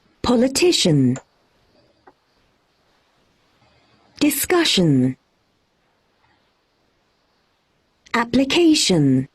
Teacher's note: in the words which end with shun, we don't stress shun, we stress the Yes.